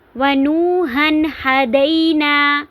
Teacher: آواز کو ناک میں نہیں لے کر جائیں گے بلکہ اظہار کریں گے، یہاں پہ تنوین کو ظاہر کر کے پڑھیں گے۔